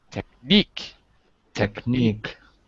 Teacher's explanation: the word technique it's on the second syllable